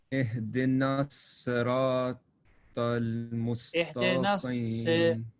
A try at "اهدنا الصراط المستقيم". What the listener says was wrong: If you say اهدنا الصراط, it is, you're making it a sin. اهدنا الصراط, say. It should be C, number one. The sound of kasra should be E, not A. اهدنا الصراط, اهدنا الصي, صي. You need to stretch, like make it heavy.